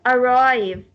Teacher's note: While if we have a 2-syllabic word and we find this word is a verb or a preposition, we stress on the second. The stress will go on the second syllable.